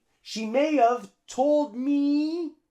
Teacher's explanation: we drop the H